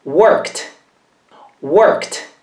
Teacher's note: Qui la parola finisce con una K, e quindi prende la T come suono.